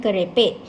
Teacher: Fonem konsonan K di sini mempunyai fitur distinktif plus konsonan, minus silabik, minus sonoran, plus belakang, plus tinggi, minus kontinuan.